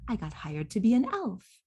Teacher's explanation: do you hear how elf is going up into the place of prominence in that sentence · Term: focus word